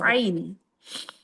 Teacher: Ain, yaitu al-halq yang bagian tengah. Iya, wasatul halqi.